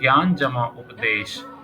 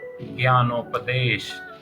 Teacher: ज्ञान में अ और उपदेश में उ और इन दोनों को जब जोड़ा गया तो ओ बना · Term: गुण संधि